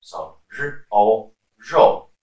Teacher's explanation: So the R in pinyin is pronounced as zh, not z or le